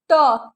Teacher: पूरा जीभ बेटा जी आपका फोल्ड होके ऊपर चला जा रहा है, जिसे बोलते हैं मूर्धा।